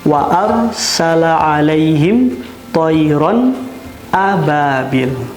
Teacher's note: ada huruf nun yang dibaca jelas pada lafaz wa arsala 'alaihim tayran ababil. Tanwin bertemu dengan huruf alif. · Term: izhar